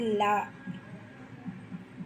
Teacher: நா மேல் பற்களின் அடியை தொடுவதால் தோன்றுவது லா. நா மேல் அன்னத்தின் நடுப்பகுதியை தொடுவதால் தோன்றுவது லா.